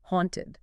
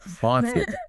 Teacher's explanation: You want a nice open ah sound.